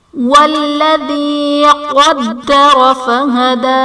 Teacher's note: قدر میں قاف حرف مستعلیہ ہے پر پڑھا جائے گا، دال حرف قلقلہ مشدد ہے تو یہاں پر بھی قلقلہ خوب جماؤں کے ساتھ ادا کریں گے